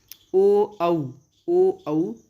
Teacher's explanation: उच्चारण करते समय देखिए हमारे दांत होंठ को टच कर रहे हैं और होंठ का आकार भी बदल रहा है, और इन्हें कहेंगे दंतोष्ठ्य। ओ औ कंठ से निकल रही है ध्वनि, और होंठ हमारे गोलाकार आकार ग्रहण कर रहे हैं, और इन्हें बोलेंगे कंठोष्ठ्य।